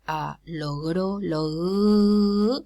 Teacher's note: if it occurs between vowels, for example, logro, logro, it's realized as fricative